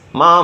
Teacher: With a falling rising tone, ma means horse.